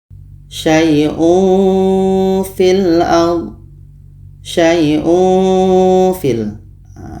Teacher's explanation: bunyi tanwin ketika Fa kita baca samar dan seolah-olah menghasilkan seperti bunyi mim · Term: ikhfa Haqiqi